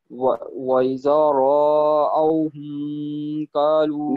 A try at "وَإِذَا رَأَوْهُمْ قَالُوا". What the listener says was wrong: نہیں، را کو لمبا نہیں کریں. ہاں، آپ نے پڑھا وَإِذَا رَأَوْا، تو یہ ہے وَإِذَا رَأَوْا. ایک تو لام پہ زور نہیں پڑا، وہ یوں لگا کہ جیسے لام الگ ہے، تو اس کی جو تشدید ہے نا اس کا اظہار نہیں ہوا. اور لام جو لدالون والا ہے وہ لام بھی لمبا نہیں کرنا.